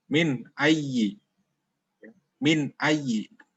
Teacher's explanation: nun mati atau tanwinnya dibaca jelas tanpa mendengung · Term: izhar khalqi